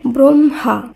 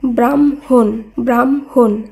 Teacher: আগে ম পরে হ উচ্চারিত হয়েছে